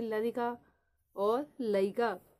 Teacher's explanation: मध्य आने वाले रा का लोप हो जाता है, जैसे लरिका और लईका।